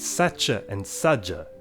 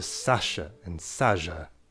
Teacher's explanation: sa[t͡ʃ]e and sa[d͡ʒ]e cook down to sa[ʃ]e and sa[ʒ]e